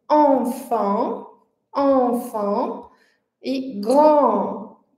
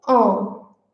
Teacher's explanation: É on. Então, os lábios se arredondam, mas eles se expandem, eles se abrem. E a língua mais relaxada, mais para frente. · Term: vogal nasal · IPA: /ɑ̃/